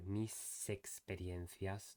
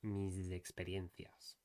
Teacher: here the S is between two vowels, it should be just a clear S, like it is most of the time in Spanish.